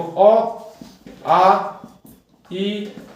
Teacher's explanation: हवा आएगी इस वर्ण को बोलने में सिर्फ मुख से आएगी, नाक का इसमें प्रयोग नहीं होगा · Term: निर्नुनासिक